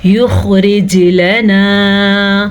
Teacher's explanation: یخرج لنا، خوا کو ہم پر پڑھیں گے، خوا حروف مصالیہ میں سے ہے. جیم پہ کلکلا ہو رہا ہے کیونکہ خطب جدن میں سے ہے. را کو باریک پڑھیں گے، را کے نیچے زیر کی وجہ سے.